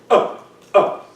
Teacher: Tight onset results in a glottal stroke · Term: hard onset